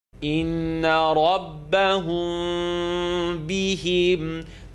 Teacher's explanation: The meme sound of rabbahum, hum, is going to vibrate between my lips. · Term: Mim sukoon followed by ba